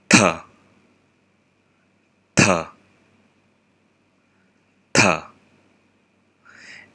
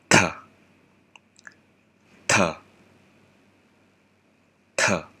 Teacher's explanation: The next one is a consonant digraph, TH. This sounds like Vietnamese T, but with aspiration.